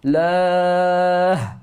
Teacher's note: Tarqiq bermakna kita nipiskan lam pada lafzul jalalah, dan mesti kita bunyikan ha ketika berhenti pada lafzul jalalah.